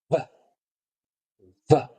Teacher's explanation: es la V labio dental, es decir, labio y diente. Va, va. Se produce al mover solamente el labio inferior con los dientes, sin mover los cachetes.